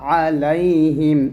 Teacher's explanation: আইনটা আমরা গলার মাঝখান থেকে চাপ দিয়ে চিকন করে বলব